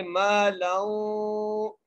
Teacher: لام کو واو سے ملانا ہے اور لام کو واو سے ملاتے ہوئے غنہ بھی کرنا ہے